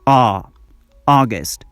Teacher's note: when you pronounce the second sound your lips are rounded